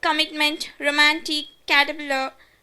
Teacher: T is a glottal stop in multiple syllable word.